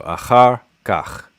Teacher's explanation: I'm imagining there's primary stress and then secondary stress on the whole phrase, and that char is the primary stress syllable and kach is the secondary, and the a is just sort of there.